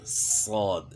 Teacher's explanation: زبان تالو کی طرف اٹھ رہی ہے، زبان کے درمیان اوپر تالو کی طرف اٹھ رہا ہے، جس کی وجہ سے جو ہے صاد جو ہے موٹا پڑ جا رہا ہے۔ یعنی صاد کو موٹا کرنے کے لیے ہونٹ استعمال نہیں کرنے، ہونٹ اگر بھی جو استعمال ہو رہے ہیں تو غلطی ہے، زبان جو ہے نا تالو کی طرف اٹھے گی تو صاد موٹا ہوگا۔